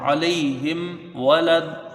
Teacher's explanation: یہاں میم ساکن کے بعد واو آیا ہے تو یہاں میم ساکن کا اظہار شفوی ہوگا، یعنی میم میں دیر نہیں ہوگی بلکہ اس کو جلدی پڑھا جائے گا